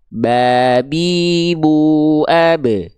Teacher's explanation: dengan menyentuhkan bibir atas bibir bawah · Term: huruf ba